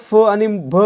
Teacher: मित्रांनो महाप्राण वर्ण म्हणजे कोणता असतो तर ज्या वर्णाचा उच्चार करताना ह चा उच्चार होतो किंवा हवा तोंडावाटे बाहेर सोडली जाते त्याला म्हणायचं महाप्राण वर्ण